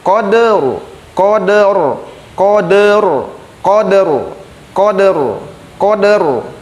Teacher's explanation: Cara membacanya, kode, de-nya dal di sukunnya dikeluarkan dulu, de kemudian ro sukun. Koderu, koderu, koderu, koderu, koderu, koderu. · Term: dal sukun